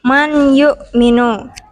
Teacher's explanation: nun mati atau tanwin dengan memasukkannya pada huruf setelahnya dan dibaca dengan mendengung contoh Man yuk minum huruf nun sukun bertemu ya lalu untuk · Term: Idgham Bighunnah